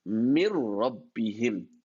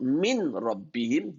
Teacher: You merge the noon and the ra, mir rabbihim. But you don't add a ghunna to it.